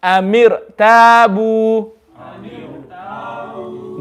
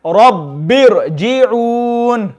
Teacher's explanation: So when the kasra and the ra sakin are in separate words, then the ra sakin will also be read full mouth.